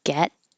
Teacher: And I'm not going to say the T get, I'm just going to hold my tongue in the T position, get, and then not release the airflow.